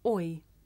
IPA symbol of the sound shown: ɔɪ